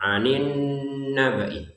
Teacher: dua harakat dengungan dan ditahan dua harakatnya ya. dua harakatnya ini ditahan. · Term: nun bertasydid